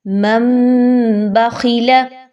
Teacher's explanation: چھوٹی سی میم کے یہ مطلب ہوتا ہے کہ آپ نے یہاں پر اقلاب کرنا ہے، یعنی نون کی آواز کو اپنے میم کے ساؤنڈ میں بدل دینا ہے